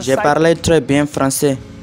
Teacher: o R deles é mais forte, saindo lá do fundo da garganta